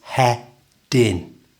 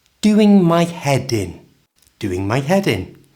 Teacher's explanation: join the head and in together by moving the D over